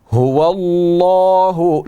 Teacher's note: لفظ اللہ کا لام موٹا پڑھا جائے گا, پر پڑھا جائے گا, کیونکہ اس سے پہلے واو کے اوپر زبر ہے